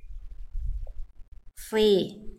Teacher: Kayak sama huruf S, tapi dia pangkal lidahnya diangkat karena dia tebal.